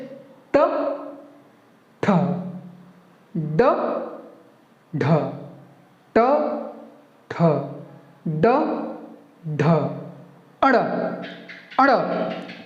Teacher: हम लोगों का जो जीवा होगा वो हल्का सा फोल्ड होगा, आगे की ओर मुड़ेगा, मुड़कर ऊपर के जो मूर्धा है वहां जाकर लगकर टक करके चटाक से वापस आएगा, तब जाकर ट ठ का उच्चारण सही होगा। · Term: मूर्धन्य